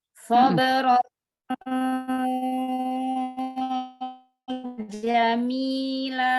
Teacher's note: Sod dengan sin, makhrajnya sama. Ujung lidah hampir ketemu dengan gigi seri bawah.